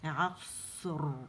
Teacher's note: جیسے صاد کی موٹا ہے تو اس کو موٹائی سے ادا کریں گے، یعنی اطباق ہے مزید موٹا ہے تو اسے مزید موٹا کر کے ادا کرنا ہے ہم نے. عصر، اور را میں صرف استعالہ ہے تو اسے استعالہ کے ساتھ ہم نے ادا کرنا ہے